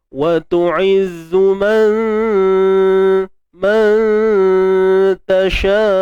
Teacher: Dia bertemu dengan huruf ta. Ta nipis, maka dengung pun nipis. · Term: Ikhfa haqiqi